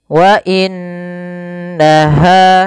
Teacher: suara nunnya kita tahan dengan sepanjang dua harakat tidak langsung dibaca WA innaha tapi ditahan dulu suara gunahnya sepanjang